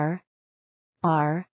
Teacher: 舌を奥の方に引っ込めて、舌の先が上顎につかないようにして、うーとうなります。